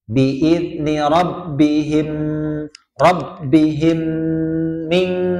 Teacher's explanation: Kemudian bi'idni rabbihim, mim mati ketemu mim lagi. Ya idgham mimi, namanya idgham mutamatsilain. Ya, sama ditahan ya. 2 harokat.